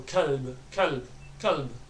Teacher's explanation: The kaf, lam and ba sound, they merge together, so kalb, kalb, kalb.